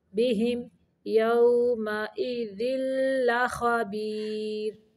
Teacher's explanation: بہم پہ صرف میم کو ظاہر کرنا ہے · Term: اظہار